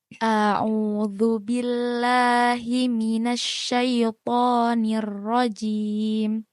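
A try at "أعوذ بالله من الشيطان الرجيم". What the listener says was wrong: Dikoreksi ya Kak ya. Dalnya masih kurang sebut nih.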